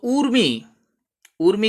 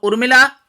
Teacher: ऊर्मी जो लहर के अर्थ में प्रयुक्त हो उसमें ऊ दीर्घ होता है, जबकि उर्मिला उसी से बनने वाला शब्द है, उसमें ऊ ह्रस्व होता है